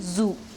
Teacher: The 14th consonant is the Z sound, as in zoo. It is described as a voiced alveolar fricative consonant.